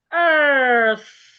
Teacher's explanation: It has TH. Your tongue must be outside as you get to the TH sound. And at the beginning, the vowel sound is a longer sound.